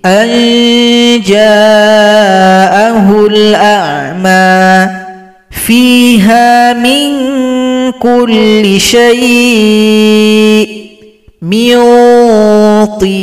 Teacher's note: nun dibaca dengan samar-samar ke huruf jim. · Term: ikhfa hakiki